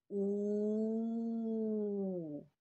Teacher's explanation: Ерніміз піл жаттығуындағыдай аузымызды, ерніміздің бәрі шошайып, алдыға қарай созылады екен